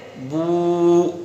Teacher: یہاں خالی بو پڑھ کے نہیں نکلنا ہے، بلکہ با کو کھینچنا ہے ایک الف کے برابر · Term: واو